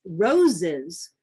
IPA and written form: roʊ.zɪz (roses)